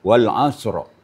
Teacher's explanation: Jadi kalau kita berwakaf pada ayat pertama, maka situ bertemu dua sakin, dua sukun, shad dan ra. Shad dan keduanya harus kedengaran wal asro ya.